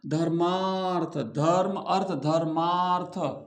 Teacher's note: धर्म अ धर्म अ और अर्थ अ तो अ और अ मिलकर के क्या बन गए? आ बन गए। तो हो गया ना धर्मार्थ धर्म अर्थ धर्मार्थ आ हो गया। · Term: दीर्घ संधि